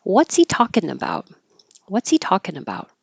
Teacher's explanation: get rid of the H and it sounds like what's he and that really does sound like C so what's C what's he talking about what's he talking about